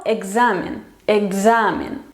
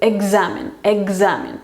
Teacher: Tenemos K y Z, entonces la K se tiene que hacer sonora, va a ser como G, examen, examen, no examen, sino examen.